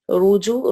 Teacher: را کو موٹا پڑھیں گے ضمہ کی وجہ سے